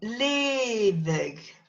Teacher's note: And oddly enough, that GH sounds like a V.